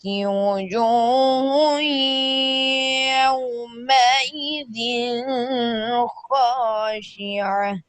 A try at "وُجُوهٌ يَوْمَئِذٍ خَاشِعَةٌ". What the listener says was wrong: یوم دن پہ غنہ ہوگا؟ آپ نے غنہ کیا ہے، پھر پڑھیں.